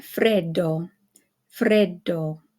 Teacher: then we have the Double D in Fredo Fredo okay so you hold it just a little bit longer than if it were just 1 D